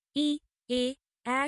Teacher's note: সম্মুখ স্বরধ্বনি। জিভের সামনের অংশের সাহায্যে উচ্চারিত স্বরধ্বনিগুলো হল সম্মুখ স্বরধ্বনি। ই, এ, অ্যা স্বর এ জাতীয়।